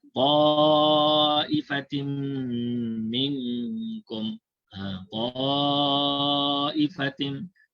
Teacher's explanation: Mat wajib muttasil dibaca 4 harakat.